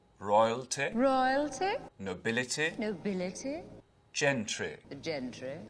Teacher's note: those short ending e sounds you won't really hear that in English accents anymore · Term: received pronunciation